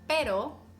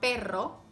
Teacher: the tongue placement is the same your tongue goes up but instead of tapping the tip of your tongue once you have to bounce your tongue multiple times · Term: strong R